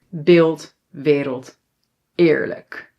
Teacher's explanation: sometimes when it's in front of an l or r yes, it sounds a little bit more like i